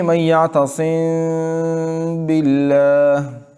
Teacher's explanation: اخفاء شفوی جب میم ساکن کے بعد حرف با آ جائیں تو اس میں تھوڑے سے میم کو تھوڑا نرمی کے ساتھ ادا کریں گے ہونٹوں کے خشک حصے سے، اور پھر اس کے بعد حرف با کو اپنے مخرج سے ادا کریں گے، اور اسی میں غنہ بھی کریں گے، اسی میم ساکن میں غنہ کریں گے، باقی کسی بھی میم ساکن میں غنہ نہیں ہوگا۔